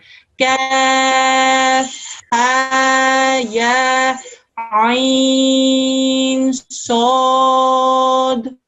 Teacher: It's kaf for 4 seconds, ha for 2 seconds, ya for 2 seconds, ain for 4 seconds, sod for 4 seconds